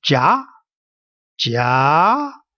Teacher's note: There's also a second tone. The second tone is going upward as you read this word. It's called the ja, ja, all the way up.